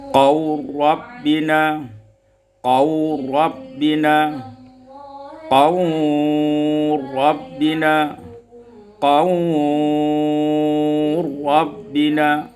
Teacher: mad idgham kamil dengan membaca mad itu qasar, tawassut dan isba'